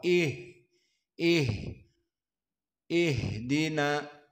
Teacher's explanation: maka di sini hams dan juga ha dalam keadaan rakhawah